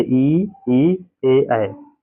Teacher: जहां पे जिव्हा का आगे का भाग सक्रिय होता है वह अग्र स्वर होते हैं